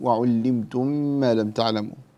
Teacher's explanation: أدغم بغن في إدغام المتماثلين في علمتم